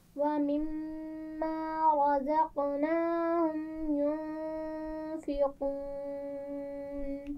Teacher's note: یہ زا ہے درمیان میں، نرمی سے نہیں پڑھا جائے گا، سیٹی کے ساتھ پڑھیں گے